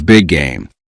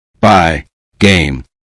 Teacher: A learner may expect two separate G sounds big game but native speakers often hold one longer G sound rather than clearly producing it twice by game. The two sounds merge into one connection.